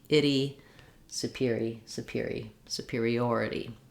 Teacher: that T is a flap in this context because it's followed by an unstressed syllable. · People will tend to say itty or itty or ed or ed, that they want to match those vowels, and we do have the I vowel and the E vowel together with a flap in between.